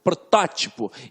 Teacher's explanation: eu tenho a sílaba forte na antepenúltima sílaba. Então, eu tenho uma proparoxítona e toda proparoxítona é acentuada.